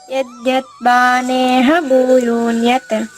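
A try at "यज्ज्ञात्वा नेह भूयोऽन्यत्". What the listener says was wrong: దీర్ఘం పెరికేస్తున్నారు మీరు. యద్ జ్ఞాత్వా నేహ భూయోన్యత్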